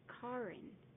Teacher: The key here is that the words car and in are almost combined into one, rolled into each other